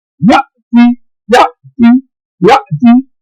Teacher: یہ حمزہ کے اوپر جزم آئی ہے، یہ آواز جھٹکے والی بن گئی بنسوٹ، یہاں جھٹکا دینا ہے.